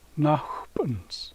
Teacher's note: Accent goes on the first syllable. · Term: accent placement